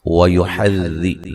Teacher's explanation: ذال کو نرم ادا کریں گے، را کو موٹا ادا کریں گے